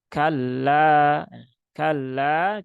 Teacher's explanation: lam bertasdid tidak perlu ditahan terlalu lama